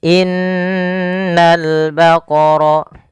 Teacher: Yaitu pada lafal ini suara nunnya ditahan, dan nun ketika dia berharakat tasydid kita hukumi dengan bacaan namanya gunnah. Cara membacanya menahan dulu suara n-nya sepanjang 2 harakat baru dilepas.